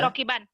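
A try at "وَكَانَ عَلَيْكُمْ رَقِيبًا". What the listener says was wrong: Baca apa adanya dulu. Bannya jangan ditahan nih. Wa kana 'alaikum raqiban. Raqiban itu latihan. Karena kalau ada yang nanya, kok bacanya gitu? Ini lagi latihan baca, bukan baca Quran. Quran harus dihentikan. Raqiba.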